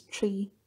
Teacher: ta sound is aspirated and the stressed one